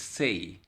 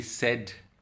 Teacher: In say there are two vowels, so it is a diphthong. In said it is just one vowel.